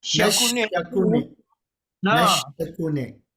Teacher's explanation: అది చిన్న శకునే శకారం సకారం కాదండి